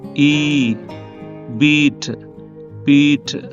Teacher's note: front అంటే టంగు ముందుకు వస్తుంది క్లోజ్ అంటే పైకి కూడా వస్తుంది అంటే ఫ్రంట్ క్లోజ్ కాబట్టి ఇది టంగ్ ముందుకి పైకి వస్తుందన్నమాట దీనికి దీర్ఘం ఈ బీట్ బీట్ ఇది ఫ్రంట్ మరియు క్లోజ్ అన్నమాట పూర్తిగా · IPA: / iː /